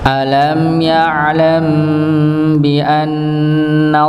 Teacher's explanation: sebelumnya hurufnya Nun yang berharakat fathah maka lafaz Allahnya di tebalkan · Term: lafzul jalalah